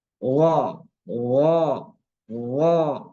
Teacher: Allah ini lidahnya, ujung lidahnya keluar sehingga nempel ke gigi ujung gigi seri yang atas